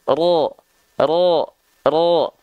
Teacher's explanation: Sekali lagi, huruf ro ketika berharokat baris atas, kenapa dia nggak dibaca dengan vokal A sesuai dengan basic fathah, yaitu vokal A? Kenapa dia malah terdengar menjadi vokal O? Karena huruf ro ketika berharokat baris atas, dia harus dibaca dengan keadaan yang tebal.